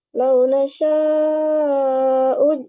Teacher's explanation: Lau nasya'u itu mad wajib mutasil. Membacanya itu panjangnya 4-5 harokat.